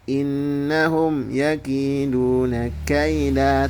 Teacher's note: Idhar syafawi adalah apabila mim mati bertemu dengan huruf selain mim dan ba, maka itu dibaca jelas. Idhar syafawi ya, diperjelas mimnya. Contoh bacanya innahum yakiduna kaida, tidak ada dengung.